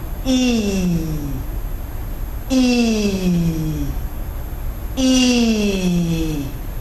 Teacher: So that's a long E sound. It's a front closed sound produced with spread lips.